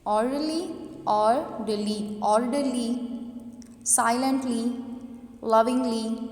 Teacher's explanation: First syllable को हम loudly pronounce कर रहे हैं। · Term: स्ट्रेस